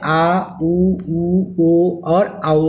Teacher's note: स्वरों के उच्चारण में जीभ का पश्च भाग काम करता है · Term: पश्च स्वर